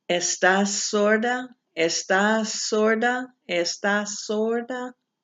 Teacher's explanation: I'm repeating it so that you can hear that there's a little more sound, but you're not saying estás sorda. There's no pause in there.